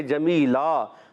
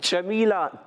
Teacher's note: جمیلا 2 زبر کی تنوین کو وف میں الف سے بدلتے ہیں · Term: وف بالابدال مع الالف